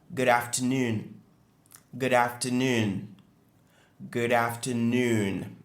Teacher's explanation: Donc, l'accentuation est sur noon, qui est la partie qui est prononcée plus clairement